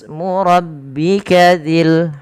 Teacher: tidak dibaca tabaraka usmu tapi langsung ke Sin karena di sini adanya hamzatul wasal yang tidak dibaca